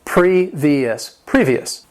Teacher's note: This word has three syllables. The stress is on that first syllable.